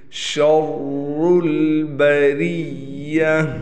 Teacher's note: ये रा मोटा पढ़ा जाएगा, इस पर पेश है, लिहाजा इस रा को हम मोटा करके पढ़ेंगे और रा पर तशदीद होने की वजह से रा पर थोड़ा ठहराव रखेंगे · ये रा बारीक पढ़ा जाएगा, इसके नीचे ज़ेर है, गोलता वक़फ़ की हालत में हा बन जाएगी।